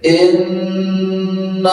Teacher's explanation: Dengungkan, ya, tahan, nun bertasdid seperti itu bacanya. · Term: Gunnah